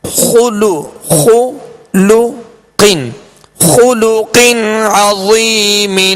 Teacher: خلو خا پر پیش، لام پر پیش، ہونٹوں کو کامل گول کر کے ادا کریں گے مگر کھینچیں گے نہیں